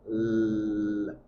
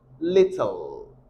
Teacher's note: your tongue is going to be touching your alveolar ridge. Your alveolar ridge is back of your upper incisors. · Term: syllabic consonant